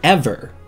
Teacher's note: just saying the word ever you can hear ver is unstressed